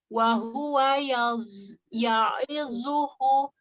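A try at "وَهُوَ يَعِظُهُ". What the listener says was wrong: Bukan zu. Zu, ujung lidahnya dikeluarkan. Wa huwa ya'idhuhu.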